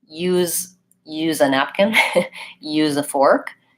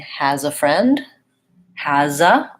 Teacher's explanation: that Z sound will link to the next word